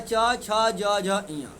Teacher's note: जिसका उच्चारण तालु से होता है उसे क्या बोलेंगे तालव्य तालव्य वर्ण बोल लेंगे